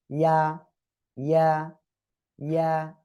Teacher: ঠিক আছে, ওকে, এবার ওই একই জায়গা থেকে জিহ্বার মাঝখান তার বরাবর উপরে তালুর সঙ্গে লাগিয়ে আরো একটা অক্ষর উচ্চারিত হয়